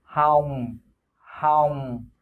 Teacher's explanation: The tone is right, but you gotta close your lips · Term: falling tone